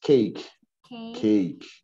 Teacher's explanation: esse primeiro A é representado com um som de Ei, normal.